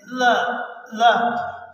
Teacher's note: زبان کی نوک کو اوپر والے دانتوں کے برابر میں لاتے ہیں تو ادا کرتے ہیں